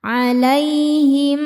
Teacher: karena ada ya sukun sebelumnya fathah dibacanya lembut atau lunak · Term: huruf lin